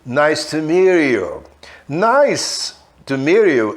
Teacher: Só que como esse T pode juntar com o som de I do you, a gente emenda. E ao emendar o T com o you, a gente fala com som meio R